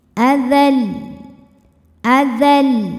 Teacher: Adzal, adzal, agak ngebentak ujungnya ya, jadi tidak lempeng adzal, tidak ya, tapi adzal, ngegas. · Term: nabr